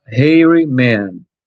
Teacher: o H, ele teve som de consoante, som de R